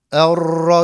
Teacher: ra harfinde tekrir sıfatı vardır Diğer harfler gibi değildir titreşimli gibi bir okuyuşu vardır tekrir tekrar kelimesinden gelir bu tekrir sıfatında ifrat ve tefrit olmaması · ne çok abartarak erra gibi rayı aşırı titreterek okumayacağım